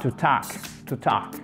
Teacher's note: En phonétique, c'est juste un entre le A et le O, mais en tout cas, c'est une voyelle longue et le L ne se prononce pas